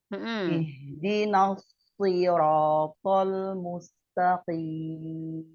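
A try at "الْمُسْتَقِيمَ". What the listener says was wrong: Mustaqim, tipiskan taknya. Buka tetap rahangnya. Sekali lagi, ta, rilekskan lidahnya. Kalau to, nah jadi to dia.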